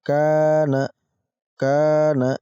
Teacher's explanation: ada Kaf yang berharakat fathah Lalu ada Alif setelahnya maka ini masuk kategori Mad Thobi'i pada panjang 2 ketukan · ini masuk kategori Mad Thobi'i pada panjang 2 ketukan Kana Kana kita baca panjang 2 ketukan